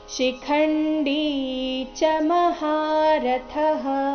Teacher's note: ಶಿಖಂಡಿ ನಲ್ಲಿ ಡಿ ದೀರ್ಘ ಬರಬೇಕು ಚ ರಸ್ವ ಬರಬೇಕು ಅಂದ್ರೆ ಚ ನಂತರ ಇರೋ ಶಬ್ದನ ಅದಕ್ಕೆ ಜೋಡಿಸಿ ಹೇಳ್ಬೇಕು ಶಿಖಂಡಿ ಮಹಾರಥಹ ಈ